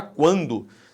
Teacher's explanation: Se você fala quando, esse U é pronunciado, o que existe é um ditongo. É um chamado ditongo crescente nasal.